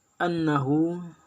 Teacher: keenam yaitu annahum hukum bacaannya itu ke ghunnah musyaddadah karena ada huruf nun yang bertasydid cara membacanya masuk dengan mendengung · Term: gunnah musyaddah